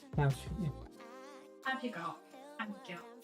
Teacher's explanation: I do drop my H's.